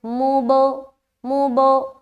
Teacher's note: میم کو با سے ملا کر جدا کر رہے ہیں، کیونکہ یہاں پر قلقلہ پیدا کرنا ہے اور با حروف قلقلہ میں سے ہے۔